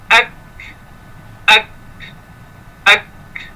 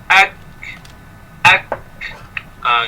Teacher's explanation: sepatutnya dia ada bersifat dengan menahan suara baru keluar angin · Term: hams